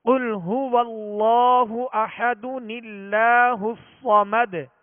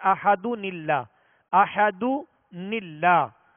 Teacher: تنوین کے نون ساکن کو زیر دے کر اس نون قطنی کو اللہ عز و جل کے لام کے ساتھ ملا کر ہم آگے پڑھیں گے